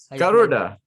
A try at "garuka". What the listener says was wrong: No. Ka. This is mistake.